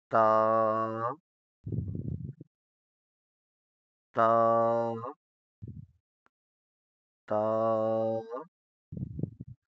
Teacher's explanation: تا کو بھی نرمی کے ساتھ پڑھنا ہے اور باریک پڑھنا ہے، نرمی کے ساتھ اور باریک پڑھنا ہے۔